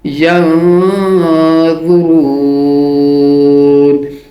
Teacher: یا کو نون کے ساتھ ملاتے ہوئے غنہ کریں گے